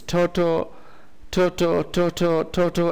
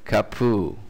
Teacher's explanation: So in Hawaiian, the ta is replaced by ka.